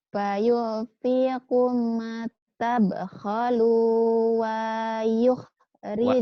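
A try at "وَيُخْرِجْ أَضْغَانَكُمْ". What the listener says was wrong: Pendek. Wanya pendek. Wanya pendek.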